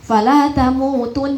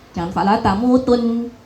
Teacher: walaupun waqaf, nun tasydid itu tetap harus diberi hak gunnahnya